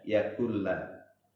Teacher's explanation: nun sukun ketemu dengan lam itu namanya idgham bilaguna